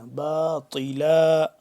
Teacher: باطلا، طا کو موٹا کر کے پڑھیں گے، تا سے جدا، تا باریک ہوتا ہے جبکہ طا موٹا کر کے پڑھتے ہیں